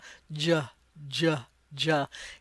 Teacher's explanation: J looks like a puppeteer's mouth, so basically the sound starts up by your nose. It starts high up by that alveolar Ridge, and then you drop your jaw like a puppets jaw. "Juh, juh, juh." If you feel your jaw as you say that letter, you can feel the movement of the jaw.